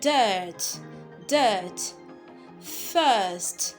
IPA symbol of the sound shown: ɜː